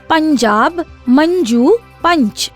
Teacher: यदि अनुस्वार च वर्ग के किसी वर्ण के पहले उच्चरित होता है उच्चारण च वर्ग के पंचमाक्षर ञ के जैसा होगा